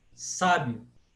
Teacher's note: Esse I de sábio, ele é uma semivogal. É uma vogal um pouquinho mais leve. Sábio.